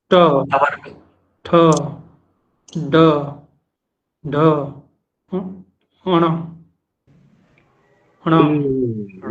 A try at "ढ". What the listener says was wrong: यहाँ भी आपका चौथा वर्ण कंफ्यूजन में है, वहां महाप्राण खुल के नहीं आ पा रहा। चौथा, पांचवा नहीं, चौथा।